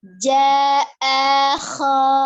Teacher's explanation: Ya, jadi pokoknya tidak dengan monyong kan dia cuma perubahan dari A-nya itu dari tenggorokan bagian bawah, kemudian kho-nya tenggorokan bagian atas, jadi tidak pengaruh dengan lidah, tidak pengaruh dengan bibir